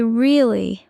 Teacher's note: if you say really with a flat voice, it sounds bored.